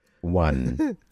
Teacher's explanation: the classic, I guess, cliche Italian accent that we hear when the vowel is always put in the end.